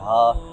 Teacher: ہا اس کو حلق کے آخری حصہ سے پڑھا جاتا ہے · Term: ہا جو دو آنکھوں والی